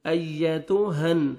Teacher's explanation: ایتو، یا کے ساتھ ملائیں گے، یا کا ساؤنڈ آنا چاہیے، تا کو ہم باریک پڑھیں گے تاکہ طا میں ساؤنڈ نہیں جانا چاہیے